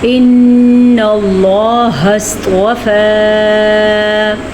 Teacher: ان اللہ، پھر سے نون پہ شد آئی تو نون پہ غنہ کر لیا۔ لفظ اللہ کو ہم نے پر پڑھا کیونکہ لفظ اللہ سے پیچھے زبر ہے